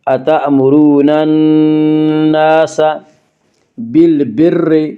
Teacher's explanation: یہاں را مشدد کے نیچے زیر ہے اس لیے را مشدد کو باریک پڑھیں گے۔ · اتأمرون الناس، الف مدہ، الف ہمیشہ مدہ ہوتا ہے، الف سے پہلے ہمیشہ زبر ہوتا ہے، الف مدہ کو ایک الف کے برابر کھینچ کر پڑھتے ہیں۔